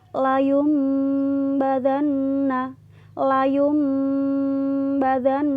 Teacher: cara bacanya seolah-olah ada huruf mim nya ya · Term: iqlab